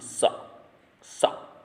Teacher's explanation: सरोते वाला जो सा है वो दंतव्य सा है, तो इसको केवल दांतों से बोलना है